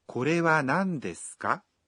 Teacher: Adding it to the end of a sentence and saying the sentence with a rising intonation allows you to ask a question